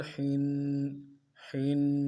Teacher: اگلا لفظ جو ہے ہا ہے، تنوین ہے اس کے نیچے، ہا کو گہرائی سے مضبوطی سے جماعوں کے ساتھ ادا کرنا ہے اور تنوین کو غننے کے ساتھ ایک الف مقدار میں کھینچنا ہے